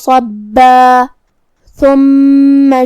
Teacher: ثا کو ہم زبان کے سر اور اوپر والے دانتوں کے اندرونی کناروں سے ادا کریں گے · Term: حرف الثا